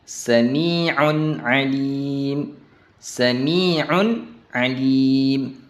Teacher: suara nun terdengar jelas tanpa dengung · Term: izhar halqi